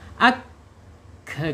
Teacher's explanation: Kap ini ee kaidahnya yaitu menyentuh ya lidah ujungnya. Ujung lidahnya menyentuh apa yang ada di depannya yaitu ee langit-langit yang berdaging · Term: Kaf